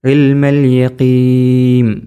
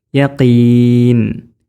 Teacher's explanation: ഇൽമൽ യഖീം എന്നല്ല യഖീൻ, ചുണ്ട് പൂട്ടരുത് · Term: നൂൻ